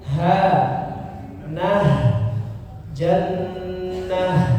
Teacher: Jannah huruf ta yang bulat ya, ta marbutah. Kalau waqaf berhenti maka dibaca menjadi huruf ha sukun, maka harus dijelaskan bunyinya. Jannah, nah bagian tenggorokan bawah ya, tenggorokan bawah.